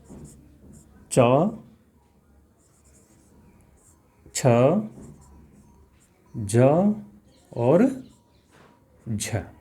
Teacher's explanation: स्पर्शी वर्ण है स्पर्शी वर्ण से अधिक स्पर्श होता है और स्पर्श होने के बाद में फिर क्या होता है कि जो व्यंजन है वो कैसा हो जाता है संघर्षी यानी कि एकदम घर्षण करके निकलता है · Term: स्पर्श व संघर्षी